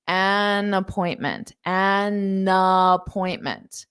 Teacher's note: you're using that n to also connect onto the word appointment and you're doing that because it Smooths out pronunciation